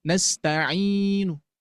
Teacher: Ada yang raum nastainu. Nasta'in ada nunnya Bu, Pak. Ada ada nunnya tapi sedikit itu raum namanya ya.